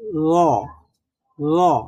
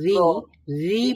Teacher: আর যখন ঋ পড়বো ঋ ঋ পড়ার সময় কি হবে জিহ্বাটা র পড়ার সময় কি ছিল আমাদের জিহ্বাটা সরু ছিল আর ঋ পড়ার সময় জিহ্বাটা কিন্তু আমাদের একটু ছড়িয়ে পড়ছে এতটা সরু নেই